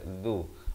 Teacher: zal di hujung lidah